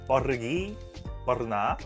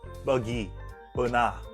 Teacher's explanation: di Indonesia menekan sekali the sound R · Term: R sound